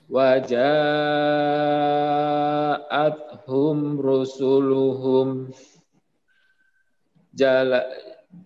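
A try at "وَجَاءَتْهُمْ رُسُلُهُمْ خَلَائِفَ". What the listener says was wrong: Huruf apa yang pertama? Huruf kha.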